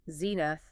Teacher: 2 syllables. Stress on the first.